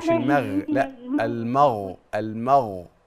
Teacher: الميم مرققه والغين مفخمه وليست مقلقله